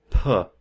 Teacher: So we have stops, and stops are where the airflow is stopped and released. So a sound like P, we close our lips and then we let out a puff of air. So P is a stop because we have stopped airflow and we pushed it through.